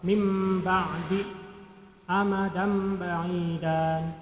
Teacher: Nun mati atau tanwin dibalik menjadi mim mati cara membacanya. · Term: iqlab